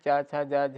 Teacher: तालव्य का स्थान च, छ, ज, झ, व यह इनका स्थान तालव्य है